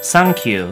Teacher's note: When translated into Japanese, we change the th sound into sa. So in Japanese, thank you is sankyu.